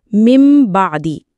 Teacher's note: اقلاب، نون کو میم میں تبدیل کرنا۔